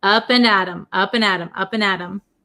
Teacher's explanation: it becomes a flap T so it sounds like a D sound